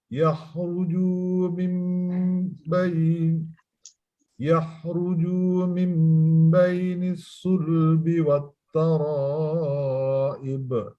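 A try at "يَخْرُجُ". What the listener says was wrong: Di yakhruju jangan dipanjangkan di huruf jimnya.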